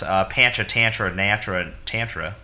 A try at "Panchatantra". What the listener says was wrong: You had it right until you kept adding more vowels.